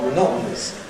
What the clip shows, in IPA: məˈnɒʔn̩əs